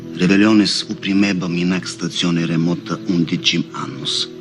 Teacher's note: He doesn't geminate his L